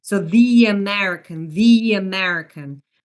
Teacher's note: So instead of saying the American English, the American accent, which would sound kind of choppy, we insert a quick Y sound, so a gliding sound, in order to make it more smooth sounding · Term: vowel to vowel linking